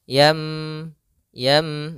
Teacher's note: suara nunnya atau suara tanwinnya dirubah menjadi suara huruf mim. Maka di sini ada huruf mim kecil di atas huruf nun sukun, supaya kita mengganti nunnya diganti dengan huruf mim. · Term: iqlab